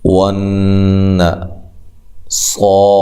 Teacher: نون مشدد پہ غنہ ضروری ہے، صاد کو موٹا کریں اور را کو بھی خوب موٹا کریں اور دونوں کو لمبا کرنا ہے 1 الف کی مقدار کے برابر۔